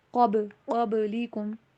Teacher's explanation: قبلکم میں با کے اوپر کلکلا کیجیے